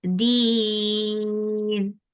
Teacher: Because of the waqf, you're giving temporary sukun here. This temporary sukun has turned into 4 counts long vowel, and this raw will be light because there is ya before it.